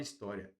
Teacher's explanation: parte do I vai para o A. Então, aqui, olha, eu tenho um ditongo crescente